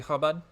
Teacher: the ch sound is actually a Hebrew glottal sound